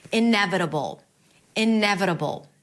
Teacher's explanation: It's a B sound, a schwa, and a dark L. You create this tension in the back of your throat. You can even imagine as if there is an O sound between the B and the L.